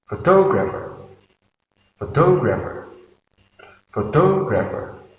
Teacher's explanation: There are four syllables in photographer, and we put the stress in the second syllable.